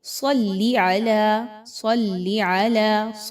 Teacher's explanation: صاد کو خوب موٹا پڑھائی جاتا ہے، حروف مستعلیہ میں سے ہے